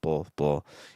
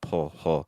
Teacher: we get kind of a new sound entirely thanks to like a dark l so like a b and an L becomes like a bull